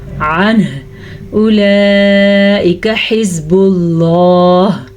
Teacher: اللہ کے نام کو پر پڑھنا ہے کیونکہ اللہ کے نام سے پہلے پیش ہے